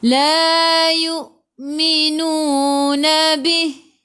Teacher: hamzah baca dengan putus, tahan nafas. Hamzah baris sukun.